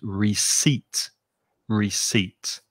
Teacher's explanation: notice in the word there's a silent p that you do not pronounce